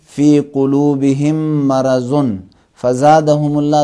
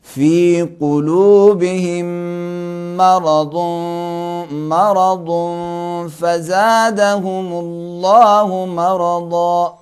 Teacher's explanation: ज़बान को साइड के ऊपर वाले साइड पे लगाकर ज़रा भारी अदा करना पड़ेगा